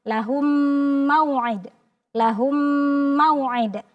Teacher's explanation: hukum mim yang pertama dimasukkan kepada mim yang bertasydid seolah-olah dia tasydid. Jadi cukup dengan memasukkan dan makhraj mimnya jadi sempurna. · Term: idgham mimi